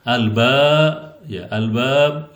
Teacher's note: Ba yang disukunkan di akhir kalimat dibaca qalqalah kubro.